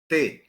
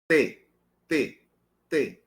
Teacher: Veja, quando eu digo língua dental, não é bem língua dental, porque o T ele não encosta nos dentes superiores, mas ele encosta nos alvéolos. · Há também a chamada oclusiva alveolar desvozeada. Essa não há vibração das cordas vocais. Por quê? Porque é desvozeada.